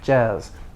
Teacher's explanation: your tongue doesn't touch it's just an s with vibration